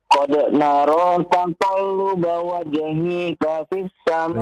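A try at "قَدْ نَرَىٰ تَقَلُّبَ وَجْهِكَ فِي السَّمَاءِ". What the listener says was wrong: Lihat panjang pendeknya. Wajhika, tidak dipanjangkan hi-nya ya.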